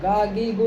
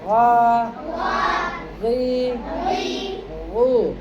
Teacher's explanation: اس کو گا گی گو نہ کر دینا، گا گی گو اگر کر دو گے تو غلط ہو جائے گا، غین بھی نکالا جائے گا، غین کا بھی تلفظ ہے، غا غی غو، اور غین حروف مستعلیہ میں سے ہے، اس کو موٹا پڑھنا ہے